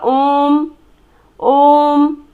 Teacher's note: उच्चारण में ज़्यादा समय लग रहा है, यानी कि 3 गुना समय लग रहा है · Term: प्लुप्त स्वर